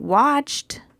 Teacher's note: in watched the Ed sounds like T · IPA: /t/